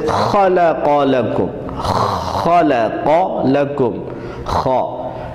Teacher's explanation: خا جو ہے یہ گلے کے اوپر والے حصے سے ادا کرنا ہے، یعنی گلے کا جو بالکل ابتدائی حصہ ہے، یہاں سے خا ادا کرنا ہے جیسے گلے میں خراش یا خراٹے کی سی آواز پیدا ہوتی ہے۔